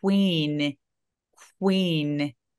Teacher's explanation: K하고 W가 같이 있는 느낌으로 그렇게 소리를 내거든요.